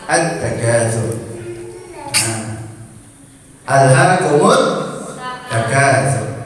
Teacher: Lamnya hilang, melebur ke huruf ta-nya. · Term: idgham syamsi